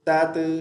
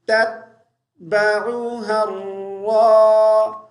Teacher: یہ جو دوسرا تا ساکن ہے اس پہ قلقلہ نہیں کریں گے